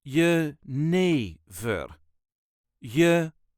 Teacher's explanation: The way us Dutchies say it is Jenever, Jenever. There is a very slight emphasis on the second syllable, Jenever, Jenever.